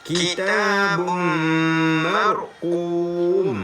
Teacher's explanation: Letakkan ar di belakang ma, jadi mar. Angkatkan pangkal lidah kita ni, ra baca tebal